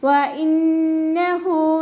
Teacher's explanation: ഹൻ്റെ കൂടെ വാവ് സ്വഗൈറയാണ് വന്നിട്ടുള്ളത്, അപ്പോൾ നമ്മളവിടെ 2 കൗണ്ട് നീട്ടിക്കൊടുക്കുക · ഹംസയെ ക്ലിയർ ആക്കി കൊടുക്കുക കേട്ടോ. നൂനിന് ശബ്ദ വന്നിട്ടുണ്ട്, അപ്പോൾ നല്ലോണം മണിച്ച് കൊടുക്കുക